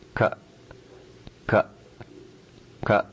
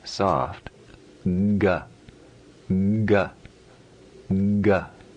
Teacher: Hard. The minimal amount of sound that you can make in the throat, unvoiced. Soft, or voiced, has more vibration in the throat.